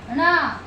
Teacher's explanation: ण का उच्चारण स्थान मूर्धा भी होगा और नासिका भी होगा।